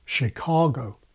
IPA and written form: Chicɔgo (Chicago)